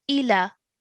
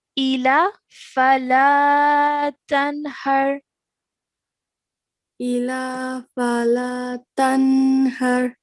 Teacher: this lam simply has a fatha. So we're not to stretch that longer for than 1 second. So it's going to simply be ila.